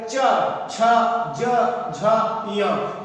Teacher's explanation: अगला है क्या है, अब चा वर्ग च छ ज झ य, चा वर्ग के जितने भी ये पांचों वर्ण हैं इनको बोलने में क्या होता है कि जीभ जो होती है वो सीधा और सीधा तालु को छूती है, यानी कि मुंह में छत को छूती है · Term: तालव्य व्यंजन